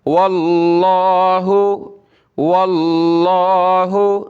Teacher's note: लफ्ज़ अल्लाह से पहले वाव पर ज़बर है, लफ्ज़ अल्लाह को मोटा करेंगे